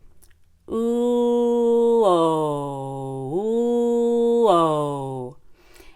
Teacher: O is just a little bit lower than oo. We do the same thing with our lips, but the mouth will be a little bit more open. Instead of O, very dramatic, we can just go O, where the top lip is neutral and the bottom lip is more gently rounded. · try long u first and then long o oh oh and when you finish the long o you actually go back to the long u